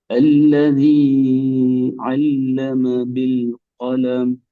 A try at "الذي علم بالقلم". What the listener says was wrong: அடுத்தது இதுல அல்லதி என்று நீ கூட நீட்டுறீங்க. அதாவது குறிப்பிட்ட அந்த இரண்டு அளவிட நீங்க கூட நீட்டி ஓதினா அதுக்கு அடுத்தது அழைக்கிறது வந்து நீங்க என்னதான் ஆயினை உச்சரிச்சாலும் அது அலிஃபினுடைய உச்சரிப்பு. நீட்டுறதுல இருக்கிற பிரச்சனை அதுக்கு பின்னாடி வார எழுத்தை தலைகீழா மாத்தி போடும். நீ கவனமா இருக்கணும். இதுவும் அலிஃபுக்கும் ஐனுக்கும் இடையில் இருக்கிற பிரதானமான வேறுபாடு. அதாவது எந்த இடத்துல நாங்க ஆறு அளவுக்கு நீட்டுவோமோ அதை தொடர்ந்து வாரது பெரும்பாலும் அலிஃபா தான் நிற்கும், ஐன் வராது.